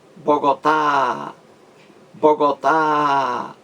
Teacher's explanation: uma palavra oxítona a última sílaba mais forte